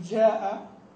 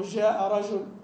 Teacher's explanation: الجيم الخفيفه هذه يعني لا ينطبق عليها وصف المجودين بانها الجيم الشديده